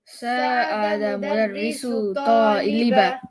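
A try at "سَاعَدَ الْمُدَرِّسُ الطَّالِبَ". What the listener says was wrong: I need you to say the L here. Sa'ada al-mudarrisu at-taliba. Mudarrisu at-taliba.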